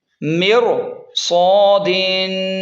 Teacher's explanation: صاد کی وجہ سے را موٹی ہوگی